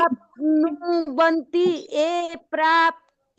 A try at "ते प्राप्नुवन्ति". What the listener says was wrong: ए नहीं, ते त से तरबूज, उसके ऊपर एक ही मात्रा ते।